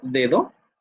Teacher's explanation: Ahí tienes dos realizaciones diferentes del fonema D. Tienes un oclusivo y tienes un fricativo.